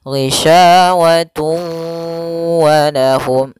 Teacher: tanwinnya dimasukkan ke huruf waw kemudian ditahan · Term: idgham bi gunah